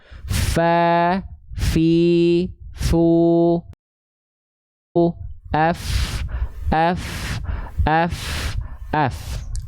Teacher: pastikan huruf Fa itu dia harus mengalir nafasnya